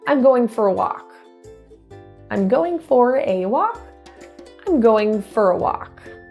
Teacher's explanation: that word for will be reduced typically to think of F and R together get rid of the vowel for for so F to R fur you will typically hear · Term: reduction